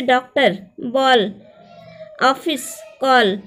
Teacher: अंग्रेजी प्रभाव के कारण आ की गिनती अब स्वरों के साथ की जाने लगी है। आ और ओ के बीच की ध्वनि है ये। आ का प्रयोग केवल अंग्रेजी से हिंदी में आए शब्दों के लिए होता है। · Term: आगत ध्वनियाँ